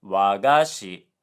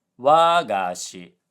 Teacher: this word is supposed to be wagashi, low high low